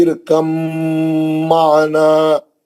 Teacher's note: با نہیں پڑھیں گے، با کا ادغام کر دیں گے اس میں میم میں · با کا میم کے اندر ادغام میں متجانسین ہو گیا. دونوں ایک ہی مخرج سے نکلنے والے ہیں لیکن دونوں کی آواز الگ الگ ہے.